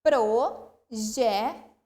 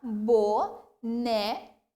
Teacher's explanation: essas 3 palavras são paroxítonas porque a penúltima sílaba é pronunciada com mais tonicidade